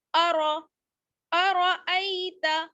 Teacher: اس کو جلدی پڑھیں گے، کھینچنا نہیں ہے. ارأی، را کو موٹا پڑھنا ہے کیونکہ را پر زبر ہے